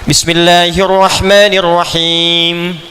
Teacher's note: Ketika Anda baca Al-Fatihah kan ujungnya mim tuh rata-rata dengan nun. Itu selain diucapkan di bibir, ya, dari lisan ke bibir mesti ada dengung ke hidung sedikit.